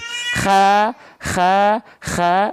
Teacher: dilafalkan dari ujung tenggorokan atau tenggorokan paling atas